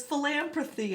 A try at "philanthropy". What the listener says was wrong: There is no M in there at all.